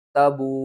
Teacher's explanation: ہیں، واو کو ایک الف کے برابر کھینچ کر پڑھتے ہیں، لیکن یہاں پر مد جو ہے نا وہ کیا ہے، واو کے اوپر، تو اس کو ہم نے 5 الف کے برابر کھینچ کر پڑھنا ہے۔ تا زبر تا، با واو مد پیش بو، تبو، حمزہ زبر